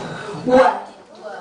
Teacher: Bertemunya antara bibir atas dan bawah namun ada sedikit rongga keluar darinya huruf wow. Kalau nggak ada rongga sama aja dengan huruf yang tadi kan.